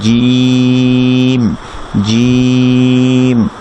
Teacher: Air flow যেটা থাকবে অর্থাৎ বাতাস যেটা থাকবে সেটা একেবারে বন্ধ থাকবে। যেমন জিম, জিম, এটা কখনোই এমন হবে না জিম জিম এরকম বাতাস বের হবে না, বাতাসটা অফ থাকবে।